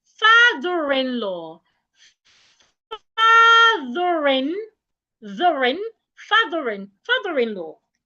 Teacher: So when you read them, father and in would come together and become one word instead of two words